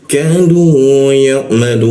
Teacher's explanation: Kita panjangkan tiga ketukan di huruf la-nya.